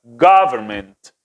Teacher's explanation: no es go es como una o abierta · la pronunciación más fuerte está en la primera sílaba